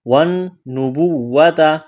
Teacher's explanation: نون مشدد ہے، غنہ کریں گے، آواز ناک میں چھپائیں گے، با کو واو کے ساتھ ملانا ہے۔